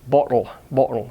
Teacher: a rounded version of it's a reverse alpha like bottle bottle so it's just like ah but with the lips rounded · So it's just like ah, but with the lips rounded, bottle. If you've got a bottle of water and such.